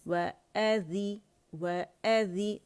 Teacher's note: वअज़ीनत, व हमज़ा कहाँ से अदा होगा, व बारीक है, व कंप्लीट गुलाई देंगे वाव को